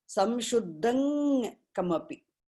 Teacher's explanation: I can say samshuddham kamapi or samshuddhang kamapi. That anuswara at the end becomes the nasal sound of a guttural ka group.